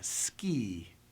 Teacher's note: And the same with a word like ski, the E sound. You can hear at the end of E a Y-type sound, a hint of a Y